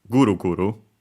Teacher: guru guru high and everything else low